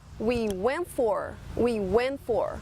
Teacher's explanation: Antes de T, você tem aí a letra N. Então, entre o T, nós temos duas letras que soam uma consoante, ok? O que acontece então com esse T? Ele desaparece. Então a gente fala we went for, ok?